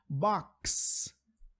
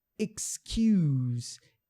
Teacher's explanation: O X é a junção de K mais S. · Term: som do X